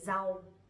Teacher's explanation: Nowadays we don't really pronounce that strongly, but instead we say z, like chữ z.